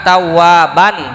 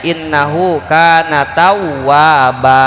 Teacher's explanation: Iwad itu pengganti dari bunyinya tanwin jadi mad gitu, 2 harokat. Innahu kana tawwaban, jadi karena berhenti dibacanya innahu kana tawwaba. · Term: mad iwad